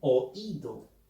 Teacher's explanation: La O es abierta y la I es cerrada, pero con énfasis.